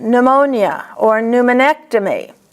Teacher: A P and an N at the beginning of the word is pronounced only with the N, like pneumonia or pneumonectomy.